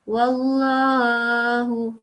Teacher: It's Allah's name and before there is a waw with the fatha, so you read it in a thick way.